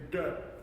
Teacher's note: So the uppercase D, it's a it's a D but it is pronounced retroflex